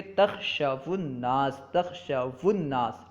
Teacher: واو کو ضمہ دے کے پڑھیں گے تخشو الناس